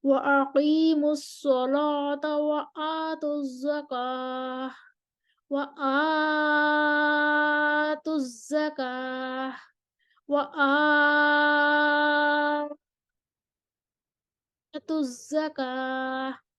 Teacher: اب ورش کی تغلیظ اللام آئے گی، کسر البدل، توسط البدل، طول البدل تینوں ہوں گے